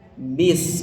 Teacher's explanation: Jadi sinnya itu ujung lidah ke ujung gigi seri bawah.